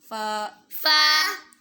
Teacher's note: اوپر والے دانتوں کا کنارہ نیچے کے ہونٹوں کے اندر والے حصے سے ٹکرائے گا تو فا ادا ہوگا